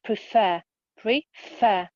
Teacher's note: we put the stress on the second syllable